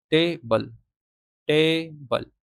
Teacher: इसमें पहला जो सिलेबल है वो स्ट्रेस है, देखो जोर जा रहा है इस पे, टेबल, यहाँ पे नहीं है स्ट्रेस, तो ये अनस्ट्रेस हो गया। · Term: stress syllable